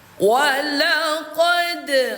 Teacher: Istifal itu artinya pangkal lidah itu terhampar, tidak terangkat ke langit-langit mulut, sehingga karakternya tipis. Jadi pantulannya ringan dan tipis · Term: qalqalah sughra